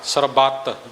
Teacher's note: ਬਬੇ ਤੇ ਭਾਵ ਵਜਨ ਦੇ ਕੇ ਸਰਬਤ ਪੋਲਾ ਨਹੀਂ ਬੋਲਣਾ